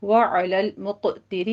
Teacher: علی الموسع میں بھی واو مدہ ہے، قدرہ میں را مفخم پڑھی جائے گی، قوف بھی پر پڑھا جائے گا، ہو میں مد صلہ صغرا ہے، 2 کاؤنٹ کرنے ہیں۔ وعلی المقتر میں قوف کو پر پڑھنا ہے